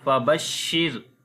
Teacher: So on the sheen we make the fashi quality. This ra we read in light sound because ra has a sukun sign and there is kasra before the ra. So we read ra in light sound.